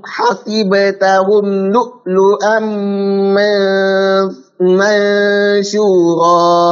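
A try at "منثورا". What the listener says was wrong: Pakai tha ya, bukan mansyura tapi mansura.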